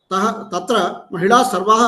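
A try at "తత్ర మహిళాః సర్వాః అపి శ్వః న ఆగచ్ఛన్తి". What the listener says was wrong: మహిళా దీర్ఘం పెట్టలేదు మీరు, శబ్దం ఎట్లా వాడారు? మహిళా సర్వా, సర్వా శబ్దం స్త్రీలింగం, ద్వివచనం మళ్ళీ సర్వా స్త్రీలింగం సర్వా ద్రవే సర్వా మహిళా సర్వా,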